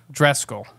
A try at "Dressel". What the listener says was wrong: No, that's wrong. Dressel. Yeah, you keep adding C's and K's and stuff in there.